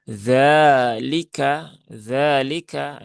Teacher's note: zalnya panjang 2 rokat karena di sini ada fathah berdiri ya, sehingga dia dibaca panjang 2 rokat dan cukup 2 rokat.